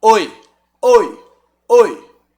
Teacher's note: olha o o como ele abafa como ele esconde o i